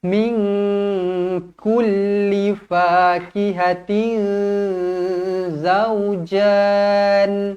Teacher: Tanwin tak selari bertemu dengan zai, ikhfa hakiki, dibaca dengung dua harakat